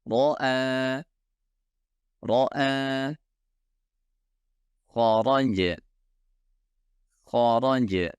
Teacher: Setiap ro membutuhkan satu getaran yang dapat terdengar